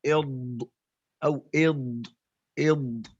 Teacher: dhad ini keluar dari salah satu sisi dari gigi geraham yang kiri atau yang kanan, gigi geraham yang kiri atau yang kanan, tapi lebih mudah ke kiri. · من أيسر أو يمناها يعني إما يخرج من الجهة اليسرى من الفم أو جهة اليمنى